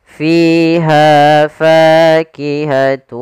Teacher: Kemudian pada lafal ha ada fathah bertemu alif maka juga mad thabi'i panjangnya dua harakat.